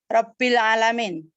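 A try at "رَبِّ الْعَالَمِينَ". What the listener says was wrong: Benar, Robbil alam. Harus lengkap. Robbil alamina. Jangan dibaca wakof. belajar menerjemahkan, baca lengkap. Agar tahu akhirnya na, bukan ni atau nu. Robbil alamina.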